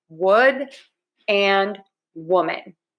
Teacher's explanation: Really think about moving your lips. So for the W, your lips are very puckered. You're going to have to move your mouth a lot.